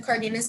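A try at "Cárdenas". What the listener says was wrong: It's the second syllable is like hiding in a den. of people, a lot of non-Latino folks make the mistake of pronouncing every letter E in Spanish as a, Cardenas, that kind of thing.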